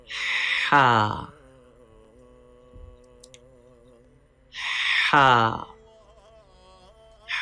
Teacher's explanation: Ha is pronounced from the middle part of the throat. Please read Ha with clear and soft sound.